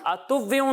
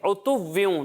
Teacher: जब हम हमजा की अदायगी करते हैं तो इसे हलक के नीचे वाले हिस्से से पढ़ते हैं, और आइन को हम हलक के दरमियान वाले हिस्से से पढ़ते हैं।